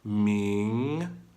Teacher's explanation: I gotta start low to rise up for the second tone